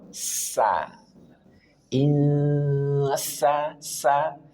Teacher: Sin ujung lidah diletakkan pada dinding bagian dalam gigi seri bawah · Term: huruf sin